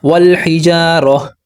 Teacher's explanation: جب میں نے وقف کیا، سانس توڑا، تو میں نے را کو ہا کے ساتھ ملایا، کیونکہ کہتے ہیں تائی مربوطہ۔